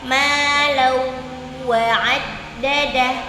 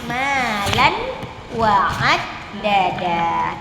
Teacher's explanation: Berarti di baris pertama cuman ada satu idgham bi gunnah, yaitu pada kata malawa'ad dadah gitu. Saat kita membaca la kan harusnya tanwin, tapi kita langsung masukkan ke huruf waw, bukan malan wa'ad dadah.